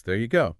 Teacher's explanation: the stress kind of builds towards go and the pitch goes up on go. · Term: stress and pitch